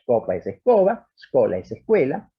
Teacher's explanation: De modo que una prótesis, por ejemplo, latín scola, ha puesto delante una E que es necesaria para sostener la pronunciación